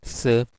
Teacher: s will be a fricative because there is a hissing sound